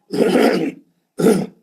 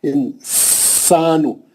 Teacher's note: سین کی سیٹی ماریں گے، مد اصلی کریں گے.